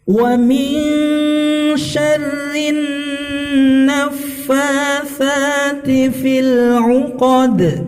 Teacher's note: dal sukun diwaqafkan, maka dia masuk qalqalah kubra ya, pantulannya lebih jelas daripada yang qalqalah sughra.